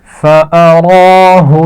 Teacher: را کھڑی زبر ہے اور موٹی پڑھی جائے گی